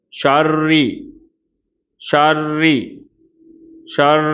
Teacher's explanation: சரிங்களா ஷர் ஷர் ஷர் பாருங்க இதுல கவனிக்க வேண்டியது ரெண்டுமே லைட் லெட்டர்ஸ்தான் ரால கஸ்ரா இருக்குது சோ அதனால ராவும் தர்கிக்காக உச்சரிக்கணும் · ரால கஸ்ரா இருக்குது. ஸோ அதனால் ராவும் தர்க்கீக்காக உச்சரிக்கணும்.